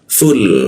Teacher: lam mati posisinya ujung lidah tempelkan bawah hidung